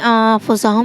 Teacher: نون ساکن کے بعد فا ہے تو اس کو اخفا کہتے ہیں، نون کی آواز کو ناک میں چھپا کر پڑھیں گے